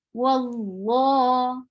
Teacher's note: fatha before Allah subhanahu wa ta'ala's name, you will make Allah subhanahu wa ta'ala's name heavy.